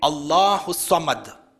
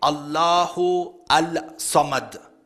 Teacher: You don't say Allahu Al-Samad. According to the rules of tajweed, the lam is silent, there is idgham